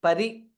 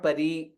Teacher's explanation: it is हस्वा इ परि नॉट परी